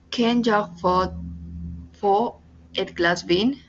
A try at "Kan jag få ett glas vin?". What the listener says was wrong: No glass. Recuerda que si tú me dices glass, tú me estás hablando de helado. Me estás hablando de glass. Y esto es gloss. Entonces, aquí la A es abierta y aquí la A es como lo que dice vocal gloss. Suena un poquito raro, pero eso es lo más o menos.